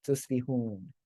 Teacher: dropping the vowel at the end of the verse brings out that rhyme